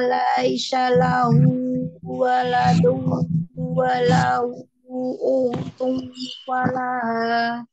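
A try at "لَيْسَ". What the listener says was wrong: Coba di kata tadi laisa sa sa bukan sya sa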